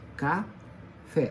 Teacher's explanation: O fé é a sílaba forte, a sílaba tônica, é a última sílaba. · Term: palavra oxítona